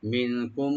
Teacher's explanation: মিন এখানে নুন সাকিন এখানে আমরা গুন্না ইখফা করবো, এখানে লাইট গুন্না , আর কুম এখানে মিম সাইন পরে যেহেতু মিম আসছে এখানে